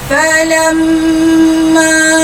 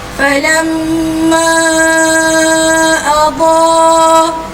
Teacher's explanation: Mim ada tanda sabdu, maka terjadinya hukum wajibul gunnah. Wajib dengung, maka kena dengung dengan dua harakat.